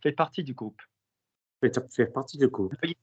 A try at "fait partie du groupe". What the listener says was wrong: Say for me, fait partie du groupe. It's a bit teethy. Fait partie du groupe.